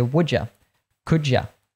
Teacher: thought would be worth pointing out here is that the you you can say a full U but oftentimes we even reduce you to yeah